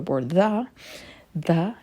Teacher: the TH in the makes a voiced TH sound, and would typically make a U sound.